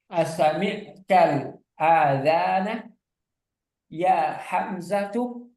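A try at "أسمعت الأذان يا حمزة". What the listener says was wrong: A-nya enggak panjang. Azana. A-nya enggak panjang.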